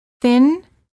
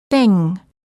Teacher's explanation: for the N as in thin, the tip of the tongue touches the gum ridge just behind the teeth. And for the ng as in thing, the tip of the tongue is down, not touching anywhere. The back of the tongue is up, touching the soft palate, which is located in the back of your mouth. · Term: N and ng